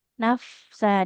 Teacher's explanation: bibir bawah itu nempel ke gigi seri atas, bukan bibir dengan bibir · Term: huruf Fa